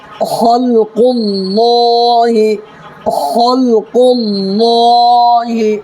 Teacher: اللہ کے لام سے پہلے زبر یا پیش ہے تو اللہ کے لام کو پر پڑھیں گے